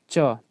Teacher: जीभ जो है तालु में सट रहा है